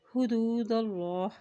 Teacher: اللہ کا نام موٹا ادا کیا جائے گا کیونکہ اللہ کے نام سے پہلے زبر